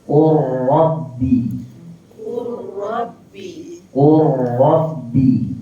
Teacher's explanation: baik yang kelima idgham huruf lam ke dalam huruf ra eh tak bunyi huruf lam tersebut eh terus bunyi kita terus matikan huruf ra Qur Rabbi Qul